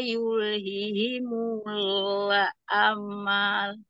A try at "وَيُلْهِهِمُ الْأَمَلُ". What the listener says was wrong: Jangan ditahan lam sukunnya.